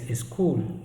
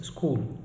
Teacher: you can see a vowel sound is added in the front of uh the releasing consonants